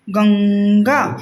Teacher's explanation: आप अगर ध्यान से सुनेंगे और बोलने की कोशिश करेंगे तो क्या होगा, आपको पता चलेगा कि जो ये न का साउंड है वो आपके नाक से निकल रहा है। गंगा मतलब आपका नाक आधा बंद हो जाता है जब हम इसका अच्छे से उच्चारण करते हैं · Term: अनुस्वार